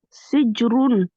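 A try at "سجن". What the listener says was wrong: Alors ici, c'est pas un Ra. Ici, c'est... Voilà, Sijnoun.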